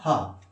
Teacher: जो हा है ये किस प्रकार का व्यंजन है या कहां से उच्चारित होता है, तो ध्यान रखना आपको कंठ से उच्चारित होता है, ठीक है, कंठ व्यंजन कहते हैं।